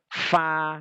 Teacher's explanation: antara dua bibir ma ya Fa itu kok harus apa ee gigi-gigi seri atas ini nempel di batnus syafah di bibir bawah